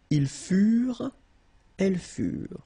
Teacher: Keep in mind that ENT, you know, the ending for the plural form is never pronounced, so furent.